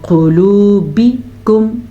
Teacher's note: قاف کو موٹا پڑھنا ہے، واو مدہ کو کھینچ کے پڑھنا ہے. قلوبکم، بکم، با کو لمبا نہیں کرنا.